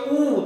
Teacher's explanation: वृत्ताकार एक तो हो गया आपका ऊ, जब आप बोलोगे ऊ तो गोल हो जाएंगे बिल्कुल होठ